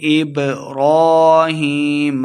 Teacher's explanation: با حروف قلقلہ سے ہے، ساکن ہے، خوب واضح کر کے پڑھیں گے